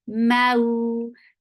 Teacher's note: Make it soft, make it 2 counts long because this is wow lean. 2 for the circle lip.